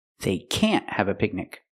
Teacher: stress the word can't, so people know it's negative